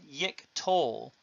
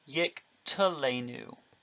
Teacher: With the addition of enu, him, the object suffix, you have yik telenu. The schwa is a reduced vowel from the holum. · the holum and sere theme vowels will reduce to a schwa if they've not already done so